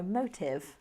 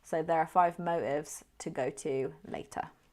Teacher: We're not going to go motive because we're using it in informal speech. So we're more likely to use the glottal T, which sounds like we're dropping the T